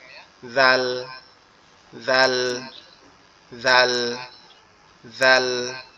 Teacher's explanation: জিহ্বার আগা সামনের উপরের দুই দাঁতের আগার সঙ্গে লাগায়া